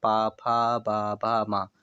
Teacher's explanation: पा फ ब भ म ओष्ठ की बात करेंगे दोनों ओठ आपस में टकरा रहे हैं जब ये वर्ण आप लोग बोलते हैं।